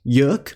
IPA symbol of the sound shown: ʊ